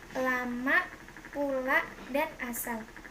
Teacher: Konsonan L, kriterianya bunyi apicoalveolar sampingan bersuara